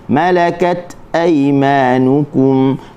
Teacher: malakat huruf ta hujung lidah digusi, tahan suara, lepaskan angin